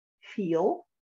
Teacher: if you say feel, you may feel the back of your tongue raising up toward the soft palate, feel, and they're technically pronounced differently.